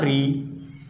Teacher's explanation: जब री का उच्चारण करते हैं, री आ ई ऊ री, जब री का उच्चारण करते हैं जो हमारी जीभ होती है, जीभ हमारी तो मुड़ जाती है। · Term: मूर्धा